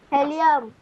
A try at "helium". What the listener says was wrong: हीलियम, हेलियम नहीं, हीलियम।